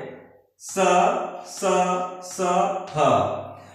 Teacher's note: उच्चारण करते समय जो हमारे मुख से जो आवाज निकलती है जो हवा निकलती है वह कहीं न कहीं रगड़ खा कर के घिसते हुए बाहर को निकलती है उच्चरित होती है इसलिए इसको संघर्षी व्यंजन या ऊष्म ध्वनि कहते